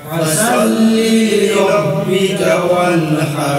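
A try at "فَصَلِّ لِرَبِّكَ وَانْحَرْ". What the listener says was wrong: এখানে দেখেন ফার আছে সোয়াদ, সোয়াদের উচ্চারণ গোল, এটা ওই তর মতো। যদি এখানে ফাসাল্লিলি বলেন তাহলে এখানে সিন চলে আসে। এ সদ জবর স, সদ জবর কি হইব? স। তাহলে ফা স, আমরা যদি ফাসাল্লিলি বলি তাহলে সিন চলে আসে, অক্ষর উল্টে যাব, তখন ভুল হয়ে যাব।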